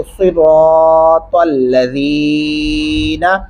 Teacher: त्वा पढ़ते हुए हमारे होंठ गोलाई की तरफ जाते हैं